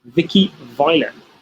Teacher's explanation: we should feel a vibration that we do not feel when we make an F sound